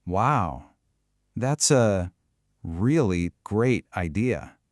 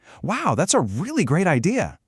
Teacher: But what if I'm being sarcastic? I'd flatten it out and slow it down.